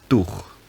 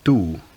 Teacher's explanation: The ch sound at the end has been lost, and the vowel has got longer to make up for it, which is a common process called compensatory lengthening.